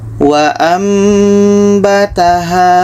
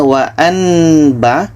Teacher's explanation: bunyi Nun Tukar ke mim yang asalnya wa anba kita tukar menjadi waambataha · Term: ikqlab